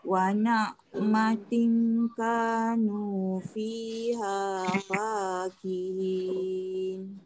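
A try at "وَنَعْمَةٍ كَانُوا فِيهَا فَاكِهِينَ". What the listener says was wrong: Cuma dekat perkataan ni'matin ni, dengung tadi dia tak berapa nak jelas. Wa na'matin ka.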